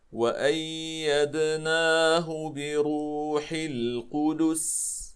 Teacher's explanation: لاحظوا إخواني الكرام، سنقف هنا على السين، وقبل السين الدال مضمومة فلا بد لنا، وكذلك القاف فلا بد لنا من إتمام حركة الضم، ثم ننتقل إلى السين ونعطيها حقها من الصفير والهمس والرخاوة. لاحظوا هكذا وأيدناه بروح القدس.